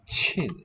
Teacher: pronounced chin, fourth tone